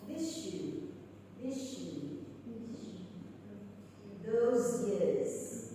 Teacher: The only noticeable change being that S becomes sh and Z becomes j